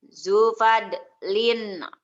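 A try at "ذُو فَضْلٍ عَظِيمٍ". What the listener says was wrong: Zo-nya panjang. Zo. Zo fadlin azimin.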